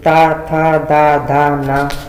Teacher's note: ता वर्ग का उच्चारण स्थान ता था दा धा ना, इसका उच्चारण स्थान दंत से है, क्योंकि जब हम इसका उच्चारण करते हैं तो ता था दा धा ना, तो हमारी जीभ हमारे दांतों को स्पर्श करती है, इसलिए इसे दंत या दा व्यंजन कहते हैं।